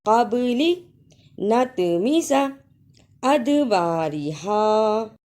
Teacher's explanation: معکم من قبل نطمس ادبارہا، تینوں میں با، طا، دال جزم کی صورت میں حروف قلقلہ ہیں، یعنی ان حروف کو ہلا کر پڑھنا ہے